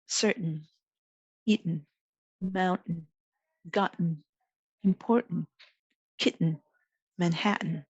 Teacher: the glottal stop appears before a syllabic nasal